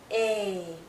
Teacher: Long sound. Our lips are still spread. It's tense, but it's open. More open compared to the other two vowel sounds we already talked about. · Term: long sound A